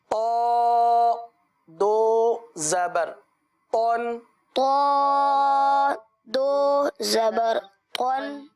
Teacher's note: فرق یہ ہوتا ہے کہ تا باریک ہے اور تو پر ہے، اس لحاظ سے تو کی ادائیگی پر ادا کرنی ہے۔ آپ کو یاد ہوگا تو حروف مستعلیہ میں سے ہے، لہٰذا اس کو پر ادا کریں گے